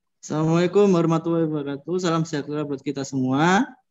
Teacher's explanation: bisa menggunakan intonasi dari do re. Jadi bisa agak naik sedikit.